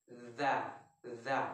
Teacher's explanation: huruf za, di mana lidah kita menempel ke gigi seri bagian atas seperti ini.